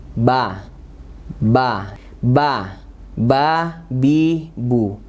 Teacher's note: makhrajnya ba itu menempelkan kedua bibir. Kalau bibir kita ditempel dengan kuat, ba, ba, ba, ba, bi, bu. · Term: huruf ba